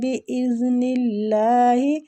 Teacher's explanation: اللہ کی لام کو ادھر باریک پڑھیں گے